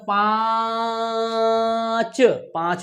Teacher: पा को भी नाक से बोलेंगे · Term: अनुनासिक